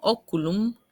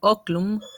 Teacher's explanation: en oculum se va a perder esa U postónica y va a quedar oclum, y ese grupo KL por contacto con la yod va a evolucionar a ojo.